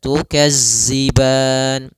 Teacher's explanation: Maka latihannya agar tidak terbaca dengan huruf zai, itu ujung lidah kita menempel dengan gigi seri atas sehingga terdengar dengan sempurna untuk makhraj daripada makhraj huruf dzal. Kemudian pada lafal ban, di sini ada bacaan mad arid lis-sukun, yaitu mad yang kita baca di akhir bacaan kita apabila ada, yaitu sukun yang dia sukun arid.